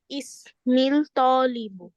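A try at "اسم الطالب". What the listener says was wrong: ইসমু তালিব। ইসমু, প্রথম ওয়ার্ডে পেশ হবে ইসমু তালিবি।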